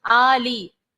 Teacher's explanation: फिर उसके बाद है वअला आली मुहम्मद, आली, हमजा जो है उसके ऊपर खड़ी हरकत है, इसको एक अलिफ की मिकदार खींचेंगे